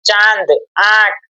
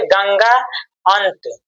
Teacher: कहते हैं अनुनासिक अनुनासिक का उच्चारण नाक और मुंह दोनों से होता है